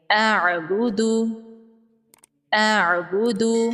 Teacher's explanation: حمزہ الگ ہے اور عین ساکن الگ ہے